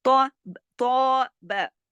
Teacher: اب با کو نہیں کھینچنا کیونکہ تو کے ساتھ تو الف ہے لیکن با کے ساتھ الف نہیں ہے